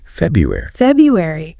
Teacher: It's spelled with 2 R's, but that first one almost always gets dropped in conversation. It sounds like February.